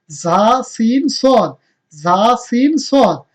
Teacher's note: জিহ্বার আগা নিচের দাঁতের গোড়ার সাথে লাগিয়ে উচ্চারণ করতে হবে